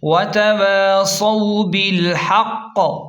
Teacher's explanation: با لام زیر بل، حا قاف زبر حق، قاف زیر قی، بالحق، ہا کو حلق کے درمیان سے صاف نکالیں اور قاف پر شد ہے اس لیے ہا کو قاف کے ساتھ سختی سے ملائیں اور وقف کی صورت میں قاف پر قلقلہ ہوگا، یعنی جھٹکے سے پڑھیں گے۔ وَتَوَاصَوْا بِالْحَقِّ، سختی سے قلقلہ کریں کیونکہ شد بھی ہے۔